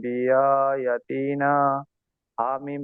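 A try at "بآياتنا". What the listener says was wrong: ইয়াটা টান দেবেন তো। বিআয়া। ইয়াটা টান দেন।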